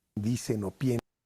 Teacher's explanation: La N de dicen se ha unido con O y por eso parece que está diciendo no.